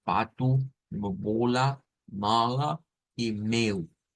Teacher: son palabras digamos que se gesticulan con la parte bilabial